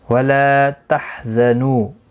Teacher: وَلَا تَحْزَنُوا، لا الف مدہ ہے، نو واو مدہ ہے، دونوں کو ایک ایک الف کی مقدار کے برابر کھینچ کر پڑھیں گے. زا کو سختی کے ساتھ پڑھیں، حروف صفیریہ میں سے ہے